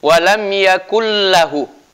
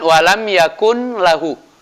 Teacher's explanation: nunnya ini dilebur istilahnya. Ya, dilebur artinya tidak disebutkan ketika dibaca. Jadi kita mengatakan walam yakul lahu.